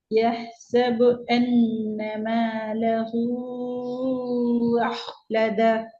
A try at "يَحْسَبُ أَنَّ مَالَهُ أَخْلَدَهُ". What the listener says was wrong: أخلد வரல, ஏட சவுண்ட் வரல.